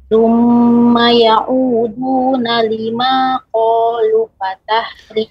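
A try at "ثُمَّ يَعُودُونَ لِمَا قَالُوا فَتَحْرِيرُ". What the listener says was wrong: Qalu ada mat di situ Ibu. Qalu. Nah, tadi dibaca pendek.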